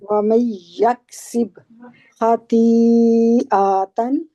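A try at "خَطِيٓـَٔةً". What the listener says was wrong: आ को लंबा नहीं करना, आ के आगे अलिफ नहीं है। आतन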